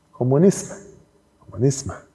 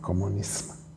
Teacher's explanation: Also die Regel ist da genau umgekehrt. Das M wird assimiliert an das S, was davor steht.